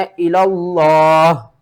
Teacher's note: لفظ اللہ کو موٹا کر کے پڑھنا ہے